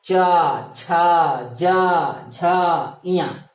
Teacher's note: चा वर्ग का उच्चारण स्थान जो होता है वो मित्रों तालु होता है।